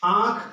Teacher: आंख में भी आप जानते हैं कि अनुनासिक का प्रयोग होता है